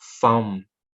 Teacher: replaces th sound with f sound in words